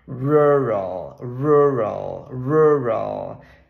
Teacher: letra na na palavra Rural a gente ter a letra U na hora de falar não é um U é um Ô pode ser pode pensar no seu o do português mas não tão arredondado assim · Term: ferradura de cavalo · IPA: /ˈɹʊɹəɫ/